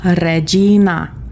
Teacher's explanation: you're going to have to roll the Rs.